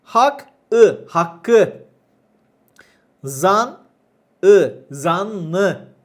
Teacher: ünlüyle başlayan ek aldıklarında veya yardımcı fiille kullanıldıklarında sondaki ünsüz artar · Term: ünsüz türemesi